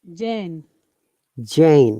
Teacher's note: it's a bit longer vowel sound, not Jan.